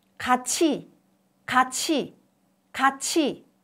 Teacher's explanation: Under the influence of E, TU changes to CH. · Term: palatalization